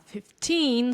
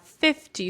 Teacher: if we have 15, so the stress is on teen, and we have 50, so the stress is on fifth here.